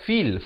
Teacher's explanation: fa baris bawah bunyi fi, bukan bunyi fe. Jadi bila bertemu lam jadi fil.